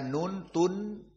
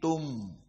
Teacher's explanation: tanwin di sini Tun bertemu dengan mim maka tidak dibaca Nun Tun tapi Tum